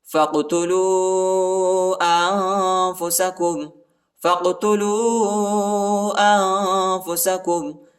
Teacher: فا کو قاف کے ساتھ ملائیں گے، قاف کے اوپر قلقلہ کرنا ہے، قاف کو جھٹکا دینا ہے، اور واو کے اوپر جو ہے چھوٹا مد آیا ہے، اس کو تقریباً 2-3 سیکنڈ تک کھینچنا ہے، اور انفسکم پر جو ہے اخفا ہے.